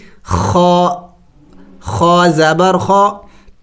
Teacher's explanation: غین خا یہ حلق کے اگلے حصے سے ادا ہوتے ہیں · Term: حروف حلقی